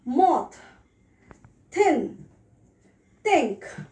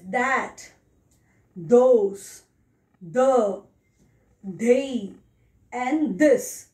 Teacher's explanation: So in TH sound, we have two different sounds. One is voiceless and another one is voiced.